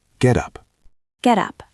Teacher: The T often becomes a flap T in American English, sounding like a soft D.